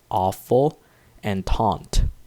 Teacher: I have the short O sound, in which the jaw is a bit more extended for words like awful and taunt.